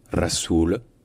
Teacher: Enfin, le mot Rasoul, qui veut dire le messager, donc c'est un R qui est roulé évidemment, et surtout le OU au milieu est un OU long, Rasoul, puis Rasoulullah, Rasoulullah.